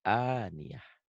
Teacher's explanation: aniatin ini, tin ini kalau dihentikan jadi H. Ini namanya tak marbutoh.